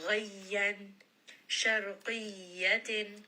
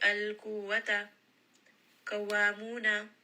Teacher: I am applying a little bit of extra pressure on the shadda letters